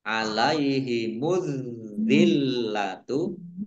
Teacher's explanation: karena Alif lamnya tidak dibaca langsung masuk ke huruf berikutnya yaitu Dal ditandai dalnya ada tasdidnya dalalnya dibaca dobel kemudian lamnya juga dibaca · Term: alif lam syamsiah